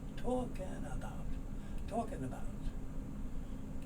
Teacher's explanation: the l is not sounded and the k moves over · And the G is not sounded often, not always, but often not sounded. And the N moves over to the soft sound, so you get talking about.